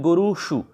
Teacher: यहाँ पर कई बार आपका दंत्य सकार देके पूछ लिया जाता है ऐसे गुरुसु, जो कि गलत है, गुरुसु नहीं बनता, आपका मूर्धन्य शकार वाला रूप सही होता है। तो यहाँ पर आपको श का ध्यान रखना, श षटकोण वाला श है ये ऐसे।